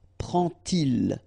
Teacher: you won't pronounce it like d to make the liaison, but you will pronounce it like t. And so you will get prend-il, okay?